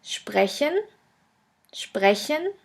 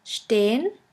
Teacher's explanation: s p s t which is pronounced like the letter combination SHP and sht